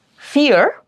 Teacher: you start with one vowel sound and gently glide over to the second vowel then it's a dip thong.